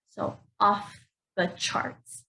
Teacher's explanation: I'm putting the word stress on the first word off.